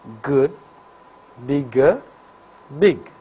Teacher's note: For velar plosives, complete closure is effected by back of the tongue and soft palate. That is, back of the tongue makes a firm contact with soft palate. · For G, vocal cords vibrate. So, G is voiced velar plosive, while K is voiceless velar plosive.